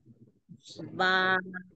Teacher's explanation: দুই ঠোঁটের ভেজা অংশ থেকে আচ্ছা কয় আলিফ টান দিতে হবে এক আলিফ টান এক আলিফ